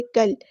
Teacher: کاف کو ہم نے لام کے ساتھ ملا دینا ہے، حمزۃ الوصل ہمارا ڈراپ ہو جائے گا